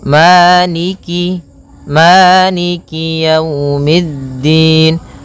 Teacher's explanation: kasrahnya juga disempurnakan, jangan sampai dibaca dengan e, tapi dia i